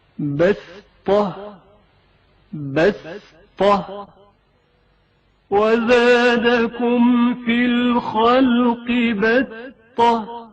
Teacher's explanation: لیکن پڑھتے وقت اس سات کو سین کی طرح ادا کیا جاتا ہے